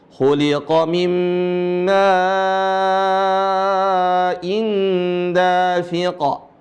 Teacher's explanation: Ma-nya dibaca 4 harokat atau 5. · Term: mad wajib